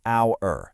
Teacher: Even though the word starts with the letter H, the sound you hear is a vowel sound.